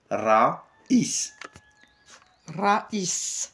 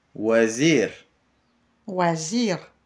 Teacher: le R français, on le prononce R roulé